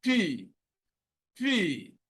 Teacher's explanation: when you produce P, there is not a major vibration